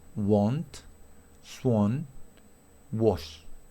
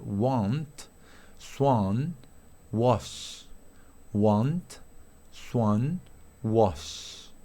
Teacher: en inglés americano se pronuncia con la A larga